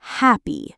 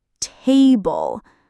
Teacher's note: 2-syllable words with first syllable stress.